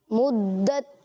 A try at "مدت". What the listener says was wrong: لیکن دال کو انہوں نے پڑھا, میم اور تا میں وہ جماؤ نہیں تھا آواز میں, وہ گویا کہ زور نہیں تھا جو دال کی ادائیگی میں تھا.